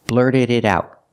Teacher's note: The D in blurted is a fast D. What about the T in out? Well, it's the end of the sentence, so it's a stop T.